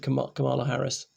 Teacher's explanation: The emphasis goes in the first syllable, not the middle syllable.